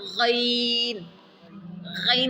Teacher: اس کو موٹا کر کے پڑھیں گے اور اونچا پڑھ کر کے پڑھیں گے